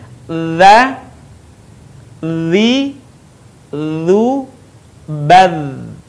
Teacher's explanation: Suara mengalir dengan lembut tanpa diiringi dengan mengalirnya udara. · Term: huruf dha